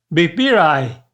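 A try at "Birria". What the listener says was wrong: Instead of saying I, Say it, replace that I with 3 E's. What's that sound? 3 E's.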